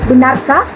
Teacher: nada tinggi, yaitu pada kata benarkah. Nah, pada kata ini tuh nadanya naik terus.